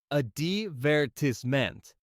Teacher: But in British English, you'd often hear it stressed on the first syllable.